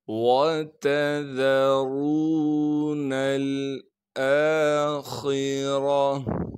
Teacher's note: خا کو موٹا کر کے پڑھیں گے کیونکہ خا موٹے حروف میں سے ہے۔ را پر زبر ہونے کی وجہ سے را کو بھی موٹا پڑھیں گے۔